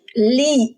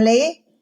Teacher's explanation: Kalau kasroh berarti i. Lam tambah i, li, bukan le.